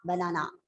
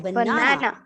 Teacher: So the second syllable is said with a louder pitch, a little more elongation of the word, and it might be a bit higher tone. That is how the stress is given.